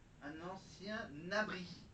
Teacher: On prend le N du mot ancien et on l'attache au mot abri. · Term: liaison